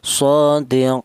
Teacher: Tul itu artinya panjang yaitu satu eh tiga alif atau enam harakat atau enam ketukan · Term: tol